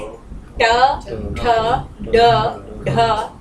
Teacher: ये मूर्धन्य, पलटती है जीभ, पीछे की तरफ जाती है।